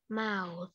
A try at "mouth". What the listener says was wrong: Chữ mau thì nó có cái âm TH ở đằng cuối nữa thì phải đúng là cái âm TH nữa là mouth.